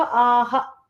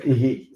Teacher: the visarga will also take the same sound as the preceding vowel sound